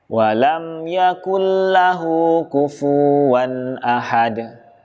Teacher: Kufuwan, fa-nya dibaca panjang 2 harokat. Ini adalah sebuah kesalahan juga.